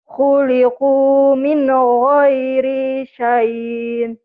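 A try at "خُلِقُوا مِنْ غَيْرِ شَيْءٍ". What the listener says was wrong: Khuliqu min ghairi syai gitu. Syai agak-agak nyentek. Syai jadi panjang, jadi madlin. Syai, syai gitu.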